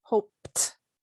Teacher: Hope ends with p, which is unvoiced. So to use this in the past tense, it will become hoped.